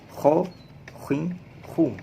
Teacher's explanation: posisinya ada di ujung tenggorokan